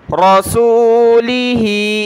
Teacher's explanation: ہا کے نیچے کھڑی زیر اور مد ہے تو اس کو زیادہ کھینچنا ہے